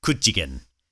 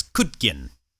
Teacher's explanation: that slender consonant actually becomes a broad consonant so rather than being a j or a cheer sound it becomes a d sound an example of that would be kuchigen which would be said